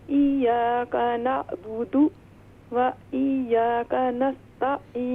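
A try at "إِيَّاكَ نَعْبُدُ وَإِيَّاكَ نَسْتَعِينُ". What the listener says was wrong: و ایاک نہیں، یہ دیکھیں یہاں پر یا پر دونوں یا جو ہیں مشدد ہیں، ان پر تشدید ہے، تو ہم اس سے پڑھیں گے ایاک نعبد و ایاک نستعین.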